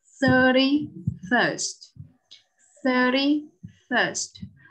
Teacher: Hai âm đều là âm ơ dài, vì vậy đọc phải nặng hơn nhé, lưỡi phải cong lên này.